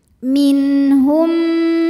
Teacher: kemudian ada hukum Mimi karena mim sukun menghadapi mim berharakat maka mim pertama dileburkan ke mim kedua disertai bunyi dengungan jadi bunyi m dan tahan